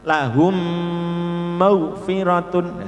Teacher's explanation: Jadi mem sukun bertemu mem sama dengan mem tasdid.